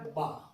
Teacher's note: बा दोनों होठों की तरी से मिलकर अदा होता है